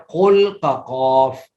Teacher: تو حروف مستعلیہ جو ہیں یہ صفت ان کو حروف مستعلیہ کہتے ہیں۔ ان حروف کو ادا کرتے وقت زبان کی جڑ تالو کی جانب اٹھتی ہے، جس کی وجہ سے یہ حروف موٹے پڑے جاتے ہیں